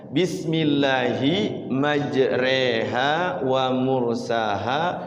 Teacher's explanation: Memiringkan bacaan fathah kepada kasroh, cenderung kepada kasroh ya. Tidak cenderung kepada fathah. Jadi tengah-tengah lah ya. Tidak tidak a, tidak i, tapi e ya. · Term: imalah